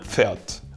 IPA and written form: ˈp͡fɛɐ̯t (Pferd)